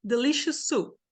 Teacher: Sons iguais. Ou seja, eu vou falar só uma vez o S, não delicious soup.